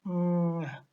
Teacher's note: It is voiced because it is produced when the vocal cords are vibrating. It is velar because it is produced when the back of the tongue is placed against the soft palate, the velum. It is also nasal because it is produced by allowing air to escape through the nose. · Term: voiced, velar, nasal